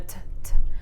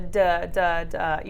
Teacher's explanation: when you have the T sound, the t, t, I don't feel that vibration, but on the d, d, d, you definitely feel the vibration on your Adam's apple